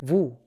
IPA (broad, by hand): ʋu